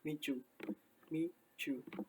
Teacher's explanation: Meet you ini ketika digabung bisa menjadi micu, micu. Kan T-nya di sini merubah huruf Y yang asalnya meet you menjadi micu. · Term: assimilation